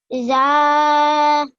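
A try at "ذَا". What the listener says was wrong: A bit. Could you just do it a bit less longer? This one with the vertical fatha.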